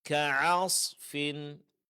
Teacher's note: ka'asfin bukan ka'as, ainnya tidak ditebalkan tapi tetap tipis